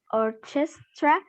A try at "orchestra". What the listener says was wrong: Esa CH hace un sonido de K. No me digan orchestra, no. Orchestra. Hace un K sound. Okay, K sound.